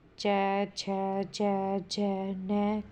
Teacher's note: च वर्ग के बोलने में सांस कुछ संघर्ष के साथ बाहर निकलती है, इसलिए च, छ, ज, न को सस्पष्ट संघर्षी कहते हैं।